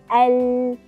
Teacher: Bila mana kita sebut, kita boleh rasakan tepi lidah memainkan peranan. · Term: huruf lam